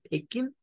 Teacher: no hacen sonar la G al final